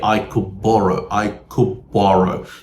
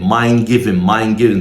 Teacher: You don't need to pronounce the D sound. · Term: elision